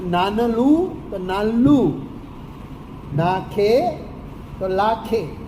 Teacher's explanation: ન નો લ થવો લ ની પૂર્વે આવે તો